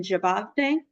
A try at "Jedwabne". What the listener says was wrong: It's actually Jedwabne, Wabne with a B.